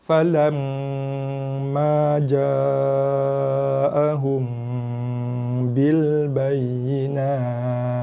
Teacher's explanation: Dia bunyi angin sikit hujung. Sedikit hembusan nafas pada huruf ta.